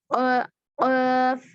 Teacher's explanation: हुरूफ लहाथिया यानी जुबान की जड़। अक़साउल लिसान ऊपर तालु को लगने से अदा होगा।